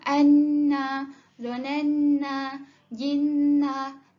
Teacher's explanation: Nun tersebut perlu didengungkan sebanyak 2 harakat. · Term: wajibul gunnah